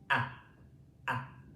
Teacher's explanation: A. Okay, it's coming from the back of my throat. The whole mouth is open. A. A.